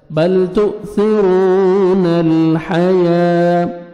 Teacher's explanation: را کو موٹا کر کے اور 1 سیکنڈ کھینچنا ہے، واو مد ہے